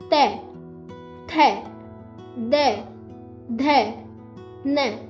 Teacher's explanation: इस वर्ग में बच्चों जो हमारी जीभ है वो हमारे दांतों से लगती है। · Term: तवर्ग